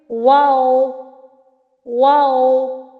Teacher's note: वाओ दोनों हंठों के गोल ना तमाम मिलने से अदा होता है। वाओ दोनों हंठों को गोल करने से अदा होता है। · واو دونوں ہونٹوں کے گول ناتمام ملنے سے ادا ہوتا ہے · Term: वाव